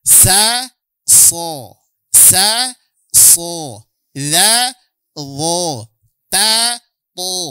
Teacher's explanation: ketebalan itu tidak berasal dari bibir. Tapi karena menggembungnya posisi pangkal lidah sehingga suara yang keluar dari rongga mulut menjadi bulat bunyinya. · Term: huruf-huruf tebal